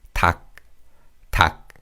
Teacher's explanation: And in this word, we pronounce the 기역 in the 겹받침 and 리을 is silent.